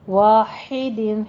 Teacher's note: ہا باریک آواز کے ساتھ وسط حلق سے نکلے گا